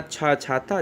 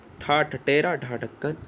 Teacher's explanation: प्रत्येक वर्ग दूसरा और चौथा वर्ड अगर लेकर आता है तो वो महाप्राण है